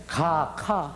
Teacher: 이 기역은 한 묶음으로 어금니에서 나오는 소리다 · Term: 어금니 소리